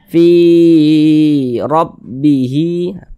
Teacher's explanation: Dibaca tabkhim, dibaca tebal sehingga pangkal lisan kita naik terangkat ke atas ketika kita mengucapkannya. Tebalkan huruf ra-nya.